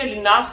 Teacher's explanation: للناس نون مشدد کی وجہ سے غنہ کر لیں گے